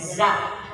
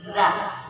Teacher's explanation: ujung lidah dengan ujung gigi depan atas